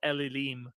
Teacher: Hebrew and so they usually have the the n Sound assimilates and you get a doubling of the L Sound